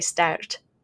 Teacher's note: You can hear that I'm curling up my tongue there as I make that R sound because I'm beginning to roll it a little bit.